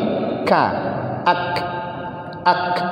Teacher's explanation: ka itu punya sifat hamas dia. Tetapi dia tidak punya sifat rokhawah. Maka dia terhenti.